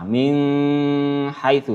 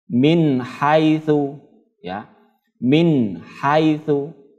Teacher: Bunyi nun sukunnya ini ya dibaca jelas, tidak mendengung ya, dibaca jelas. Kalau mendengung salah, min haitsu salah ya.